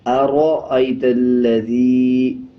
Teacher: را کے اوپر جب زبر آ جائے یا پیش آ جائے تب را کو پر پڑھا جاتا ہے، یعنی موٹا پڑھا جاتا ہے۔ اسی طرح آگے لام کے اوپر شد ہے۔